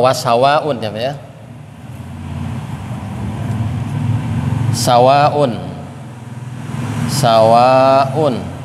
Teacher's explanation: wajib itu wajib panjangnya sampai 4 sampai 5 harokat. Kemudian muttasil itu nyambung satu, karena dalam satu kalimat. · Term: mad wajib muttasil